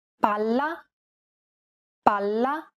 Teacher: Imagine that you're holding that consonant sound for one extra syllable.